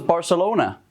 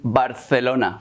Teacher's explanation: northern Spaniards pronounce Z's and C's as a TH sound